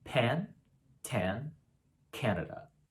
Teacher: we typically aspirate these sounds for example pan tan canada with a kind of light blow of air afterward